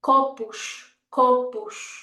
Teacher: when an S is at the end of the word, this is when we need to use a sh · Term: sh sound